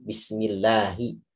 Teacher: biasanya sebagian orang-orang Mesir begitu bacanya Nah itu kurang tepat juga kalau baca bismillah fathah itu tidak mengarah kepada imalah sama sekali